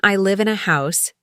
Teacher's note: the v in live is voiced. It vibrates. Many learners pronounce it like f, but in American English, it's strong. · And in I live in a house, the V in live is voiced. It vibrates.